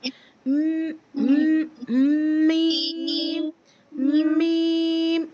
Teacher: थोड़ा सा आपको ऐसा फील होगा नोज में से आपकी साउंड प्रोनाउंस हो रही है